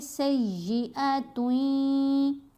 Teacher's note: سیئۃن میں جو نون ہے اس کو یا کے اندر ہی مرج کریں گے، غنہ کرتے ہوئے تا کو یا سے ملائیں گے، سیئۃن، ٹھیک ہے، تن کی بجائے توئیں۔ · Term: ادغام یرملون